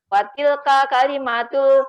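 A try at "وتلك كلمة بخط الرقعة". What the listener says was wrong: Maknya panjang Ibu. Maknya dipanjangkan. Watilka kalimatun bi khatir ruqah.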